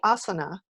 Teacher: pose it's not pronounced the way you would in Sanskrit where it would be asana with the stress on the first syllable